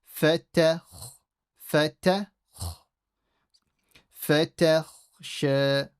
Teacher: I don't say fatakhsha, fatach. So I make it slightly heavy when I go to the kha, but without changing the ta. · So you need to change from the ta to the kha very quickly. Fata, empty. Kha is full.